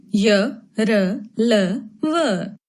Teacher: अंतस्थ व्यंजन। इन्हें बोलते समय जिह्वा का मुख के किसी भी भाग से स्पर्श नहीं होता है।